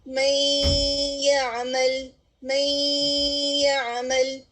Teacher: نون کی آواز واضح نہیں ہوگی، ٹھیک ہے، اور پھر اس کو ہم غنہ کے ساتھ ادا کریں گے. غنہ کے ساتھ اس طرح سے ادا کریں گے جیسے میں یعمل، میں یعمل، تو اس کو ادغام بغنہ کہا جاتا ہے.